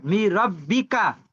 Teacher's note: এই নুনটা বাদ হয়ে যাবে। বুঝতে পেরেছেন? পড়া হবে না, লেখা থাকবে।